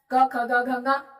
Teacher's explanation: एक तो क वर्ग हो गया जो कंठ से बोला जाता है